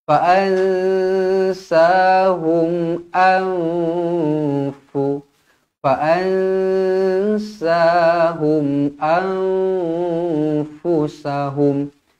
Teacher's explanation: Nun kosong bertemu dengan fa, ikhfa hakiki. Dengung 2 harokat.